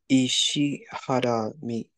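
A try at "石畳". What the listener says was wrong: It is Ishi, and it does end with the mi and have a da here. What's the first sound over here, though? Ishi, Yes, Ishitadami, perfect. You accidentally said ha.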